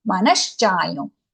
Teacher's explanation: We tend to say it as cha. It is not dental sa, it is palatal sha.